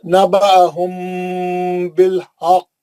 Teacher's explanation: मीम के बाद बा आने से गुन्ना आ गया वहां पे